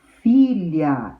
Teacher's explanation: Paroxítona, a sílaba tônica é a penúltima · Então, o fi é a sílaba tônica da palavra, então é a penúltima, porque a última é o lhá e a penúltima é o fi.